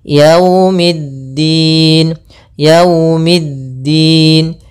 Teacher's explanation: Kemudian pada lafal wau, hati-hati jangan terlalu dihentakkan karena di sini bacaan linaka kita harus menyempurnakan daripada linnya kelembutannya.